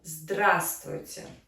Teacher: So we emphasize the first syllable.